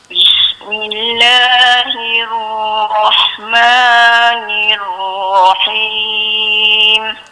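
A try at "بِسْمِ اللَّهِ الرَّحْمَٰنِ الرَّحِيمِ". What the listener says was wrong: Makcik jangan delay lama sangat kat ra tu. Kena laju sikit. Tu lama sangat tu. Bismillahirrahmanirrahim.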